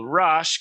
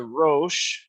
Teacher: rash contracts and goes to roche with a long o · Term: canaanite shift